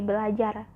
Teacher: terjadi perubahan bunyi di mana fonem R berubah menjadi fonem L. Ber ditambah kata ajar, maka menjadi belajar.